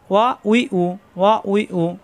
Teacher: দুই ঠোঁট থেকে উচ্চারণ, কিন্তু দুই ঠোঁট একাত্র হবে না, মুখের ফাঁকা জায়গাতে উচ্চারণ হবে।